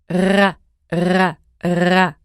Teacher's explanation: It sounds like as in raam. It's produced using the back of your tongue, which pulls back all the way behind where you pronounce G. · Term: back R